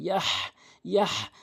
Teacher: হা, যেটি হলকের মাঝখান থেকে চাপ দিয়ে উচ্চারণ করতে হয়